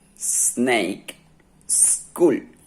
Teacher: S is also alveolar, but the teeth are together.